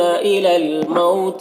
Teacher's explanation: واو لینے سے نرم آواز کے ساتھ جلد پڑھیں گے